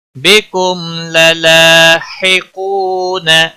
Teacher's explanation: واو مدہ ہے، ایک الف کے برابر کھینچ کر پڑھیں گے، نہ کو کھینچنا نہیں۔